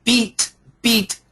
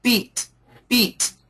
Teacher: when we say beat beat the sound goes out and a little bit up